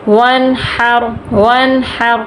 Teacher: نون تو ساکن ہے لیکن اس کے آگے ہا حروف ہلکی میں سے ہے، ہم غنہ نہیں کریں گے۔ · یہ را ساکن ہے، اس کے پیچھے زبر ہے، ہم را کو پر کر کے پڑھیں گے۔